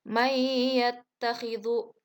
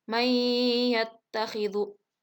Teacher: Nah, di situ ada nun mati menghadapi ya. Jadi nunnya itu tidak terdengar, namun langsung dimasukkan ke huruf ya. Nah, dan sedikit ditahan. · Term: idgham bigunah